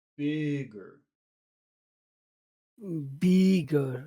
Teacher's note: the D is down in the throat the G is down in the throat this makes the vowel sound extra long